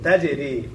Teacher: জিম কলকলা হরফ, প্রতিধ্বনি আওয়াজ দিয়ে পড়তে হয়।